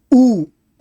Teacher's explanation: ऊ ऊ को बोलने में पीछे गई तो ये पश्च स्वर है